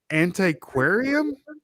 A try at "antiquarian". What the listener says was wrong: antiquarian. Antiquarian. don't say aquarium. antiquarian.